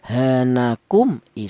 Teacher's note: mim mati ini dibaca jelas atau dibaca izhar